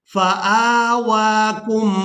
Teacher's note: حمزہ کو بھی کھڑی زبر کی وجہ سے اور واو کو بھی کھڑی زبر کی وجہ سے کھینچ کر ادا کریں گے